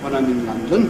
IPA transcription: w.ə.n aɪ.m ɪ.n l.ʌ.n.d.ə.n